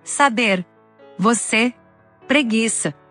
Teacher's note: la E cerrada que corresponde a la misma E del español, como en saber, você, preguiça. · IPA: [e]